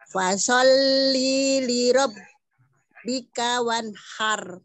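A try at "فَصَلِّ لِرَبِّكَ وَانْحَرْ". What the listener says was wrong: Masih panjang. Fasol lili gitu bahasanya, fasol lili gitu coba. Kagak panjang. Tadi Ibu baca linya yang pertama panjang gini nih. Fasolli li rabb. Nah, li yang di sini nih pendek apa panjang? Nah iya, prakteknya panjang tadi. Fasolli li rabb.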